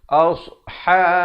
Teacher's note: Asha, ha pedas di pertengahan kerongkong makhrajnya dengan 2 harakat